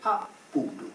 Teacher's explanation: quella doppia L dell'antichità rappresentava la nostra doppia D cacuminale